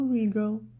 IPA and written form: 'rɪg(ə)l (wriggle)